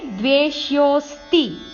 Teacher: ಸಂಯುಕ್ತಾಕ್ಷರ ನಮೇ ದ್ವೇಷ್ಯೋಸ್ತಿ ನಪ್ರಿಯಹ ನಮೇ ದ್ವೇಷ್ಯೋಸ್ತಿ ನಪ್ರಿಯಹ ದ್ವೇಷ್ಯೋ ವೇ ಮೇಲೆ ಆಘಾತ ಯೋ ಆದಮೇಲೆ ಅವಗ್ರಹ ಸ್ವಲ್ಪ ದೀರ್ಘ ಹೇಳಬೇಕು ಯೋ ಅಕ್ಷರವನ್ನು